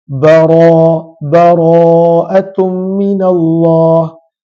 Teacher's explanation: Kalaulah kita belajar tajwid dalam bahasa Inggeris, maka mereka terjemahkan tebal dengan full mouth, mulut dibaca penuh, bara, tapi tidaklah sampai kepada perlu memuncungkan bibir. Maka bara apabila ra berbaris atas tebal.